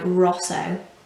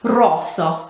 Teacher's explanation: you will always roll the r